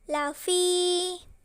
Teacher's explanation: Ini merupakan hukum bacaan mad asli atau mad tabii karena huruf fa berharokat kasrah, bertemu ya sukun, dan setelahnya tidak bertemu hamzah, sukun, waqaf, dan tasydid. Cara membacanya panjangnya 2 harokat